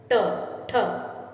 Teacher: जीभ पहले ऊपर उठकर मूर्धा को स्पर्श करती है, फिर झटके से वापस आती है, उन्हें उत्तक्षिप्त व्यंजन कहते हैं।